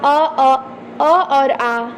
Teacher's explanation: आ इसका उच्चारण कंठ से होता है